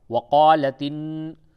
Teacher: اور نون کے اوپر تشدید ہے، غنہ ہوگا